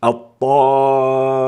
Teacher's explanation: الطاء حرف استعلاء وحرف إطباق وجاءت مفتوحة وجاءت بعدها آ، فيكون بذلك لها أعلى مراتب التفخيم